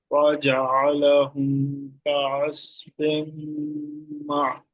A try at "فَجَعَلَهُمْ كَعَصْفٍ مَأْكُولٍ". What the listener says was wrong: معقول نہیں، مأکول حمزہ ہے.